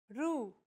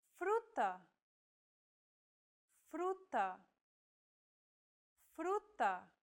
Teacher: This trill sound is done by lightly tapping the gum ridge behind your upper teeth with the tip of your tongue. It should be a quick, striking motion, similar to the sensation you get when pronouncing the T in words like butter, cutter, and so on.